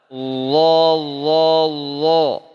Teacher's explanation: Rasakan ujung lidah bertemu dengan ujung gigi seri atas atau digigit sedikit, pangkal lidah terangkat, bahkan lidahnya lengket ke langit-langit.